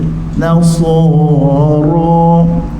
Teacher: sad penuhkan dalam mulut keluarkan di tepi bibir